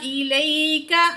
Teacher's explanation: وَلَقَدْ أَنزَلْنَا إِلَيْكَ، تو یہاں یا ساکن ہے، ما قبل زبر ہے، یہاں پہ ہم نے یا کو کھینچ کے نہیں پڑھنا، یا لین ہے، کاف باریک پڑھیں گے.